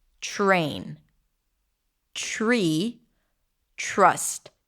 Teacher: When the R appears after a T, as in the word train, it changes the T, and the T becomes a ch sound, as in chicken.